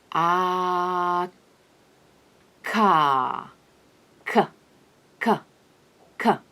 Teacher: For the sound k, on the other hand, I stop the airflow in the back of my palate, an area we call the velum. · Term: velar consonant